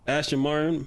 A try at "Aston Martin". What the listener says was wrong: Aston. Aston Martin. You said Ashton.